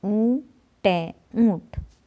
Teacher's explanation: ऊ पे ऊ की आवाज़ आती है, नाक से निकल रही है जैसे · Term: चंद्र बिंदु